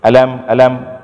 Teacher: kalau kita baca alam ini seperti ada pemisah antara a dengan lam. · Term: intonasi